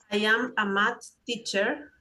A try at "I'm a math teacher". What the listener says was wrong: Okay, when you pronounce this, pronounce I'm. You said I am. I am is correct, but when you read this, you say I'm a math teacher.